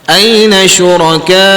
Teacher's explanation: Mad badal ni bila kita baca dia mestilah kita kena baca dengan dua harakat.